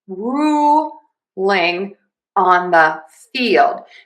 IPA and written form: ˈruː.lɪŋ ɑn ðə fiːld (Ruling on the Field)